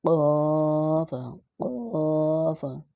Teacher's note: قاف جو لٹکا ہوتا ہے کوا اس کے ساتھ ٹکرانا ہے